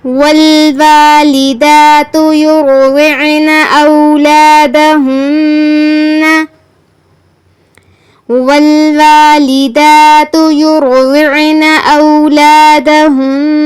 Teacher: يرضعن را اور غاد ان دونوں پر تفخیم ہے یعنی ان دونوں کو پر پڑھنا ہے